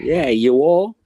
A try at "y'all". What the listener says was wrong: Y'all. It's not you all. It's y'all. Yeah, not you all, because that's what you're saying is you all. It's y'all.